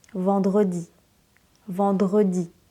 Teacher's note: On n'entend presque pas le R.